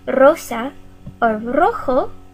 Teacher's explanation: If an r is the first letter of the word, like rosa or rojo, it's going to be a trill. Rosa, rojo, we use a trill because it begins with the letter r.